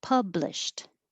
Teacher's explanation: the past tense the ed sounds like a t